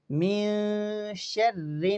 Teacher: یہاں نون مشدد ہے تو یہاں نون مشدد پر ہم غنہ کریں گے